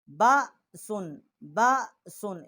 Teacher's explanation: اور اس میں با جو ہے، با کا جو مخرج ہے کہ با ہونٹوں کی جو تری ہے اس سے با جو ہے وہ ادا ہوتا ہے